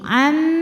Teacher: Kemudian ada hukum idghamunah kamil. Karena nun sukun menghadapi huruf mim, maka bunyi nun masuk ke mim. Am disertai dengungan.